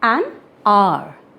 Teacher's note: Though it starts with H, but we are not pronouncing the sound of H.